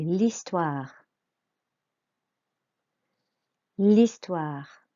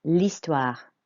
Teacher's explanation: you do not pronounce the H, it's a silent H